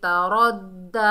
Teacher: ता बारीक हर्फ है और रा को मोटा पढ़ेंगे और रा को दाल से मिलाएंगे तरद्दा। और खड़े ज़बर को एक अलिफ की मिकदार खींचकर पढ़ेंगे।